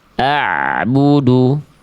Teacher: Suara ain sukun yang harusnya sedikit mengalir jangan sampai terputus.